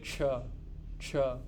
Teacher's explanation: in English nobody will say CH they will say ch ch it is a t followed by a sh